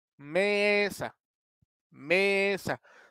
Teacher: tenemos la sílaba tónica en la me